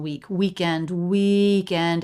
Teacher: a little bit of a up down shape on week weekend weekend it's a little bit longer little stressed second weekend in